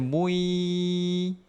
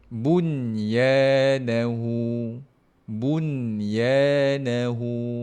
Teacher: jangan baca idgham baca dengan izhar halqi bun letak pada tempat nun